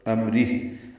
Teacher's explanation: وقفاً اس پہ ہمس ہوگا